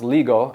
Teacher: the traditional K is now pronounced G in certain circumstances